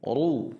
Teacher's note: ru itu tebal, ra tafkhim dhammah